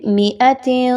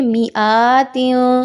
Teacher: حمزہ کو اتنا لمبا نہیں کرنا